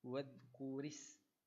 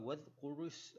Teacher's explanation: ra baris bawah, jadi kita kena baca dengan bacaan yang nipis